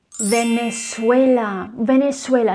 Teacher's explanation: the letter z needs to be pronounced as s